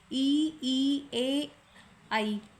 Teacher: अग्र स्वर है छोटी इ बड़ी ई ए और आई।